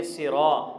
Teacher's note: سرا، صاد کو بھی موٹا پڑھیں گے، را کو بھی موٹا پڑھیں گے، لیکن را کے بعد الف مدہ ہے اس کو تھوڑا سا کھینچ کر پڑھیں گے 1 الف کے برابر